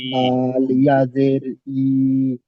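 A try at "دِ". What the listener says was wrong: ই নয়, দি, দি।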